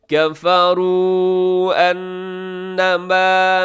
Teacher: کفروا کے آخر میں واو مدہ ہے، انما کی شروع میں حمزہ ہے تو آپ یہاں پہ چھوٹی مد کریں گے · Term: مد منفصل